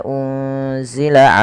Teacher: menyamarkan nunnya kepada huruf zai yaitu bacaan ikhfa hakiki